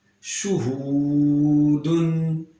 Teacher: ہا کو سینے کی طرف جو حلقہ ہے وہاں سے ادا کریں گے